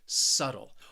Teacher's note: But what is obvious is why this word is often mispronounced, and it's because of that B. It is a silent letter, a silent B. You are not going to hear it. Subtle. Also, remember, I'm from the United States, so that T, I'm really saying a flap T, which almost sounds like a very soft D sound.